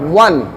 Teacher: ঠোঁটটা গোল করে ওয়ান, ঠোঁট গোল নাইলে হবে না